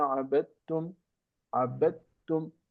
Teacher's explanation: You just make the sound merge with the sound ta, because they are similar, close to the same place of articulation. The and ta, the letters the, d, and the letter t have the same place of articulation, location of articulation in the mouth.